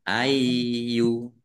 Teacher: Ya-nya dibaca double, ada tasdidnya, dibaca ai dulu. Ayu. Kemudian ar-rasulu.